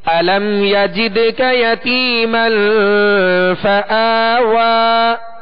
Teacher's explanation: قلقلہ کریں گے ماشاءاللہ، اس لیے کہ یہ دال حروف قلقلہ میں سے اور ساکن ہے یہاں پہ